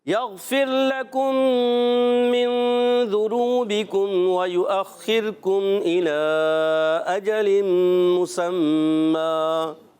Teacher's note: را ساکن سے پہلے زیر آ رہی ہے، اس وجہ سے را ہو جائے گا باریک